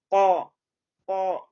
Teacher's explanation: For example काफ के ऊपर फतह है तो उसको कौ कौ मेरी जबान का बैक हिस्सा जो है वो ऊपर उठेगा और फिर हम उसको अदा करेंगे। · अब क्या है कि pronouncing the letter from the root of the tongue and the soft palate, अब पता चल गया कि this is a part of my throat and this is a soft palate and the tongue कहाँ से अदा करना है। When we touch the root of the tongue on the soft palate, then we make cough letter sound. उसको अदा बगैर touch किए वो मखरिज ना तो हैवी होगा, ना ही हम उसको अदा कर सकेंगे।